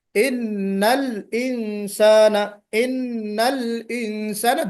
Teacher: دونوں کو گویا کہ آپ کو واضح کرنا ہے، لام کو بھی اور انسانہ کا حمزہ بھی